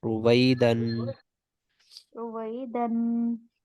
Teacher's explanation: और दाल पे तनवीन है, तनवीन के बाद रूफे हल्की नहीं है, इस वजह से तनवीन पे गुन्ना किया जाएगा।